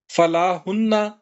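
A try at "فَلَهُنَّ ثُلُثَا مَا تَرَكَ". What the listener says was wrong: فَلَهُنَّ، فَلا کہیں جی، لا کہیں گے تو وہ نہیں بن جائے گا، تو فَلَهُنَّ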